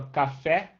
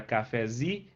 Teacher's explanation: se tu fala só café, a sílaba tônica é fé. Agora cafezinho, a sílaba tônica virou zi.